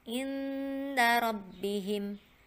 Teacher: jadi nun mati disamarkan ketemu huruf ikhfa di depannya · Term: bacaan Ikhfa